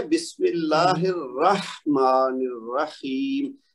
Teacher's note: یہ جو ہا ہے نا الرح، تو یہ ہا کا ہمس ہے. تو یہ اگر آپ ہمس کریں گی تو یہ آواز نکلے گی.